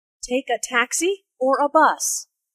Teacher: taxi or a bus the word or signals a choice here notice the rising intonation on taxi the first choice and falling intonation on bus the second choice